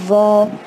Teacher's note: و میں زبان کی نوک باہر آئے گی جیسے ہم نے زال اور سا میں نکالے تھے، لیکن منہ بھر کے بھی پڑھنا اور ہیوی آواز میں بھی پڑھنا ہے